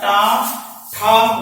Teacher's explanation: जैसे आपका टा, कहीं पर दांत नहीं आ रहा, दांत जहां पे समाप्त होता है वहीं पर जाकर हमारी जीभ टकराती है, वहीं से क्या होता है, टा ठा वहां से निकलता है। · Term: मूर्धन्य